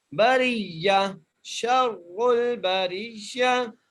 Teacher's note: را کو موٹا کر کے شرول بریہ، باقی اوپر زبر ہے، را کے نیچے زیر ہے اس لیے ہم را کو بری کر کے پڑھیں گے ، را کو یا سے ملائیں گے اور آخر پہ تا